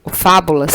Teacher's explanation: a sílaba mais forte é o fá, é a antepenúltima sílaba. Portanto, fábulas é uma palavra proparoxítona.